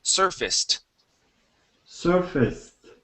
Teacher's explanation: Okay, so instead of saying surfaced, okay, the ACE here will actually be pronounced like a short I and an S